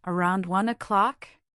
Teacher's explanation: The rising intonation turns it into a question, checking if that time works for Tom.